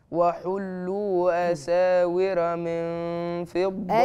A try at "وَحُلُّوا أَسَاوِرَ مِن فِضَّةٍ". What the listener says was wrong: أساور. مش راء، الراء مفتوحة عندك هتبقى مفخمة.